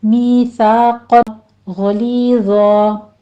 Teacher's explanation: آخر پہ زوا کو پر پڑھتے ہوئے وقفے ابدال کر لیں گے ، میثاقا غلیظا، یہاں پہ ہم نے 2 کاؤنٹ کر لینا